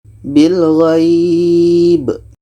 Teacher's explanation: Kita panjangkan minimal 2 harkat baru matikan huruf terakhir. Kebetulan yang mati itu ba. Ba mati adalah qalqalah, ada pantulan.